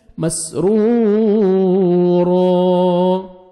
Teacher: 1 second را کو کھینچنا بھی ہے اور را کو موٹا بھی کرنا ہے